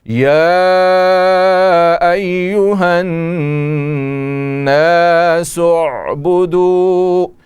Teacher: یہ نون مشدد ہے، اس میں غنہ ہوگا اور غنہ کی مقدار 1 الف ہے. سین آگے مل رہا ہے عین کے ساتھ.